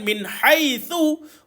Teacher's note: Min haitsu, hujung lidah dikeluarkan tuan-puan. Hujung lidah dikeluarkan.